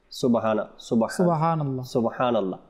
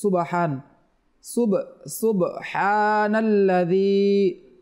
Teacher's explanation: সুব বার মধ্যে সাকিন রয়েছে, কলকলা হবে এটা